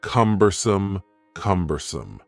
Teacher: The word cumbersome has 3 syllables, and the stress is on the first syllable